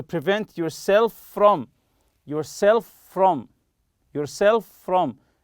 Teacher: as if it's one word with one F sound